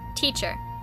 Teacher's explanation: look at the word teacher notice how i say that teacher the first syllable is stressed you can tell because sometimes it's longer sometimes it's higher and sometimes it's louder